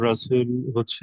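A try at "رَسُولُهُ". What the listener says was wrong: রসুলুহু, good.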